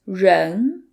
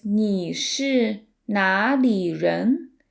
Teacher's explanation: The R in 人 is a retroflex sound, which requires you to curve the tip of your tongue backwards